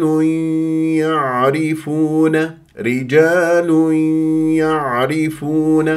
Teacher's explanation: والراء مرققه في كلمه يعرفون لانها مكسوره · النون الساكنه او التنوين مع الياء لا تجعلوها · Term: ادغام بغنه